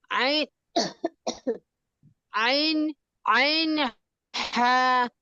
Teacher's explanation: দুই নাম্বার মাখরাজ হল হলকের মধ্যগান হইতে